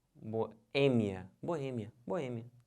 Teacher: A sílaba tônica é esse E, que já está até acentuado